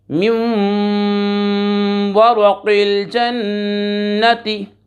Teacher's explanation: और ये बात याद रख लें, जन्ना नून मुशद्दद है और नून मुशद्दद और मीम मुशद्दद में हमेशा गुन्ना होता है। गुन्ना के माना नाक में आवाज़ लेकर जाएंगे और एक अलिफ की मिकदार गुन्ना करेंगे